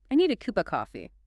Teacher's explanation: The main stress hits cuppa.